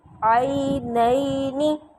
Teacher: عئی کو لمبا نہیں کرنا، نئی کو بھی لمبا نہیں کرنا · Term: یا لین